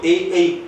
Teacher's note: ए और ऐ में कंठ के साथ साथ तालु होगा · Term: कंठ तालु